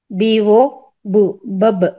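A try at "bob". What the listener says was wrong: బాబ్, బాబు కాదు బాబ్, ఓ ఉంది కాబట్టి బాబ్.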